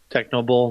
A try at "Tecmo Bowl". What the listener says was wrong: Well, you mispronounced it. Did you say techno?